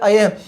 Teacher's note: तालु और नासिका से दोनों से उच्चारित होने वाला कौन सा वर्ण आता है अय